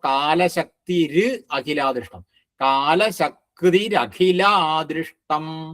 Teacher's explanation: കാലശക്തി എന്ന് കഴിഞ്ഞിട്ട് വരുന്ന വിസർഗം ര് എന്നാവും. എന്നിട്ട് അഖിലാദൃഷ്ടം.